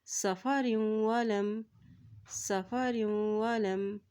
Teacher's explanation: را کی تو زیر کو واو کے ساتھ ملائیں گے کیونکہ واو کے اوپر شد ہے